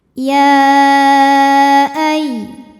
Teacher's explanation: Maka ya-nya ini dipanjangkan boleh 4 boleh 5 harokat. Jadi walaupun penulisan mad tabi'i dengan hamzahnya disatukan, sebetulnya ini dua kata ya dan ayyuha. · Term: mad jaiz munfasil